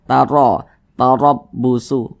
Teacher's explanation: maka huruf ro dibaca tebal, dibaca tabkhim, sehingga pangkalisan kita itu naik terangkat ke atas ketika kita mengucapkannya.